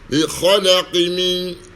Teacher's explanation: kalau diwasilkan disambungkan, maka hilang qalqalahnya